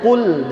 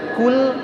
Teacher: Nah, ini qaf tebal, kaf tipis.